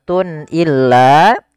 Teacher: Kemudian pada lafal Tun illa di sini ada izhar halqi yaitu suara tanwinnya harus dibaca dengan jelas karena ketemu dengan huruf hamzah dan ini kita namakan dengan izhar halqi izhar artinya jelas dari